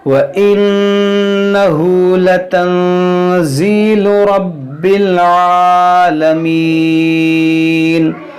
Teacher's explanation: وَإِنَّهُ، یہاں ہا پر الٹا پیش ہے، اس کو کھینچیں گے ایک الف کے برابر، یہاں نون ساکن کے بعد زا ہے تو یہاں پر اخفا کریں گے